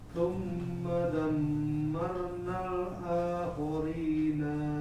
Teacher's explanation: Nanya nggak boleh panjang, tapi langsung nal gitu.